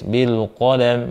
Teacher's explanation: Kemudian, qafnya tebal, qo, lamnya tipis.